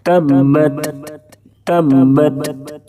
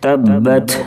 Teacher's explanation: ता और काफ जब भी साकिन हो यानी इनके ऊपर जज्म हो तो थोड़ी सी लौटती हुई आवाज सुनाई देती है। इसको जुंबिश कहते हैं।